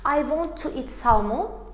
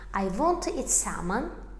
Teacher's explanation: Salmon sözündə artıq biz onu tələffüz edərkən L hərfi düşür. L hərfini oxumuruq.